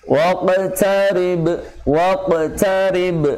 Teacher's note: Qalqalah sughra namun lebih tebal dibanding qalqalah yang lainnya karena sifat huruf qaf itu sendiri.